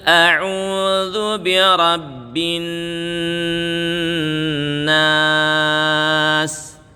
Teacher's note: binnya ditahan satu setengah Alif atau biasa disebutkan kira-kira tiga ketokan